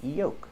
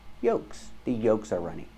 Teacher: we don't say yolks the L is silent